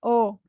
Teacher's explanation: O no es una vocal cerrada, O, ¿te das cuenta? Abres la boquita para pronunciar la vocal O.